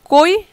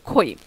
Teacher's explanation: জোড়া প্রথম শব্দের প্রথম ধ্বনিটি উচ্চারণ করতে মুখ থেকে অল্প বাতাস বের হয় এবং দ্বিতীয় শব্দের প্রথম ধ্বনিটি উচ্চারণ করতে বেশি বাতাস বের হয়